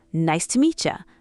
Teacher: The T and the Y become ch.